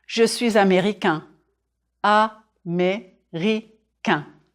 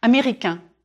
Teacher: Drop your jaw on the final nasal sound.